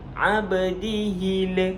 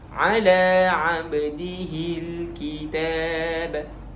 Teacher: Alif lam qamariyah jangan sampai ada lantunan pada lam sukun, lam sakin, lam yang mati. Contohnya abdihil, itu tak boleh berlaku.